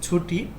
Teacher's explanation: ছুটির ট টা হলো অঘোষ অল্পপ্রাণ ধ্বনি